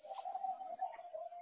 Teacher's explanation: Ya. Jadi dia gigi kita menutup, tapi udara keluar dari kiri kanan. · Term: bunyi S